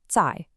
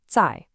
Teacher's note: To make the sound, put the tip of your tongue right behind your top front teeth, kind of like the position for the DS sound in kids, and just release it flatly. No buzz, no puff of air, zài. You try it. · The Mandarin Z is what we call an unaspirated affricate. To make the sound, put the tip of your tongue right behind your top front teeth, kind of like the position for the DS sound in kids, and just release it flatly.